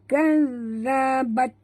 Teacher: huruf zal sahabat, jaga makhrajnya di hujung lidah ya